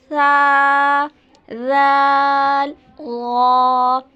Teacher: ज़बान की नोक इससे सिर्फ थोड़ा सा मुख्तलिफ है। ज़बान की नोक जब आपके सामने वाले दांतों के किनारे पर लगे तब ये तीनों हरूफ अदा होते हैं। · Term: नर्म हर्फ